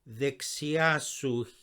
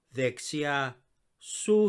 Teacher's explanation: in order to sound like a native greek speaker make the su join smoothly with the vexia